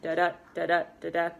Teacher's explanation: So that's when you have it following that da-da, da-da, da-da, and there's 10 syllables per line in iambic pentameter, and there's a downbeat on every other syllable